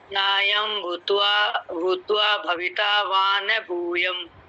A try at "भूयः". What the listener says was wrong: भूयम नहीं है, भूयः।